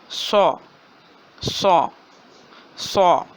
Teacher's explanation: صاد کی آواز موٹی اور سیٹی والی آواز ہوتی ہے